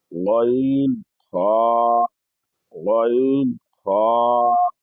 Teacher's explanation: হলকের শেষ ভাগ হইতে গইন খ